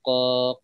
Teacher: huruf qaf itu adalah pangkal lidah ya bertemu dengan langit belakang ya. Pangkal lidah bertemu dengan langit belakang gitu ya.